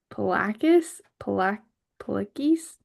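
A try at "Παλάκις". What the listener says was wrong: So the alpha will be more of a long like ah sound. So polakis.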